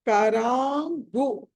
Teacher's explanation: అనుస్వారం తర్వాత గ వచ్చింది కాబట్టి పంచమా అక్షరం కరాంగు అని పలకాలి